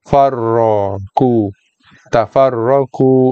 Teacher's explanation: So tebalkan kof dan ro pun sama. Dengan cara kita angkat kawasan ataupun bahagian pangkal lidah. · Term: Huruf tebal